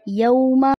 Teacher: واو ساکن اس سے پہلے زبر حرف لین جن کو جلدی سے پڑھا جاتا ہے